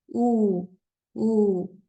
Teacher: la u cuando la pronunciamos en español pareciera que redondeamos nuestros labios u u se forma un pequeño círculo pero cuando lo pronunciamos